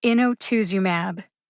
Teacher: Inotuzumab. The secondary emphasis is on in. As the syllable with the secondary emphasis, in gets almost as much emphasis as TOOZ. Inotuzumab.